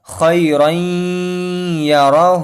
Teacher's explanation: جو تنوین کے بعد یا آیا ہے یہ پہلے کلمے میں نہیں آیا بلکہ دوسرے کلمے میں آیا ہے، تو یہاں پر ہم کو غنہ کے ساتھ ملا کر پڑھنا ہے